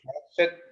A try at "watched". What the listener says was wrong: Look, we don't have in here a watch it, but watched. It's like two T's. Watched.